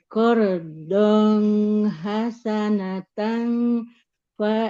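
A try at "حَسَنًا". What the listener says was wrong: Hmm, nggak hasanatang ya. Nggak ada huruf taknya. Qardhan hasanan Qardhan hasanan.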